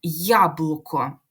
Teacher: ми чітко відчуваємо що літера поділяється на два звуки й та а ми їх чітко чуємо Тому так і записуємо яблуко записали позначили